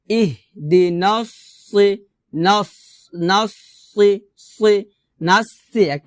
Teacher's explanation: তো সদটাকে একটু মোটা করতে হবে